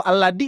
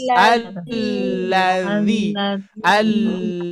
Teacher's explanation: Di dal berarti ya kalau ini yang ada titiknya. Kalau yang ada titiknya harus menempelkan ujung lidah ke gigi sari atas atas.